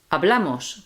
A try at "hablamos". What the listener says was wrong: hablamos. Cuidado, be careful. It's not hablamos. It's not hablamos. It's hablamos. Okay, that's where your emphasis goes.